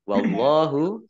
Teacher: Allahnya dibaca tebal karena harokat di depannya fathah